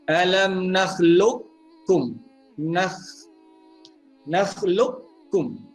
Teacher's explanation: kita idgham nakis dengan tidak meninggalkan sifat huruf qaf itu